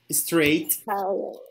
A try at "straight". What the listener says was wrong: You're saying like this, strain, but it's straight.